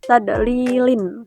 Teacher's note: Hukum tajwid mad tabii karena ya sukun setelah kasroh dibaca panjang dua harakat